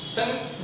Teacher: शंख बोलते समय हमारे नाक से हवा बाहर आ रही है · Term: अनुस्वार